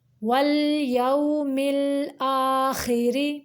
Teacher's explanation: خا جو ہے ادنائی حلق یعنی حلق کا وہ حصہ جو منہ کی جانب ہے وہاں سے پر کر کے نکالیں گے، اور را کو باریک پڑھیں گے کیونکہ اس کے نیچے زیر ہے۔